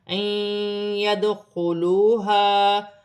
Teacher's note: دال ساکن ہے، حروف قلقلہ میں سے ہے